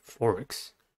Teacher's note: Thorax has two syllables and the stress is at the first one. The first syllable is four.